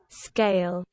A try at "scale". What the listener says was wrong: Yeah, you see that? Not skill. Scale.